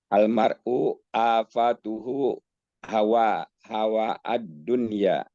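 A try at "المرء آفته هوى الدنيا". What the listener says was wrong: Langsung saja hawad dunya, jangan dipotong ya. Ya, hawad dunya.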